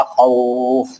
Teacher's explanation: फे के 2 जेर हटाकर जैसे जज़म लगाएंगे तो मद लीन आरिज बन जाएगा खौफ, जिसको 6 हरकत तक खींचेंगे